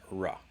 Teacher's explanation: The upside down R, that's the American English R, that's ra. It's an approximant, it's not lateral.